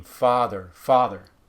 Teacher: a lot of Americans don't go all the way to opening up the back. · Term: retracted